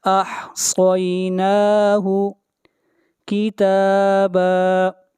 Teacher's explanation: صاد کو موٹا پڑھیں گے، صاد حروف مستعلیہ میں سے ہے